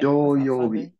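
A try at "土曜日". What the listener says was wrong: So, doyobi. With one do. Doyobi. I always think it's doyobi long, too. I do that. Doyobi is short. It's a curse of English. We want to put that stress on the first syllable, so we make it into a long mora. And it's not long.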